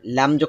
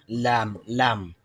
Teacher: জিহ্বার আগা উপরের মাড়ির এখানে, দাঁতের উপরের এখানে মাড়ি থেকে লাগবে, মাড়ির সঙ্গে লাগবে